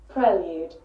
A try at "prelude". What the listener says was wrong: Lude. Not prelude. So you're not British. USA. American pronunciation. Can you hear a pre in there? Can you hear pre in there? Nope.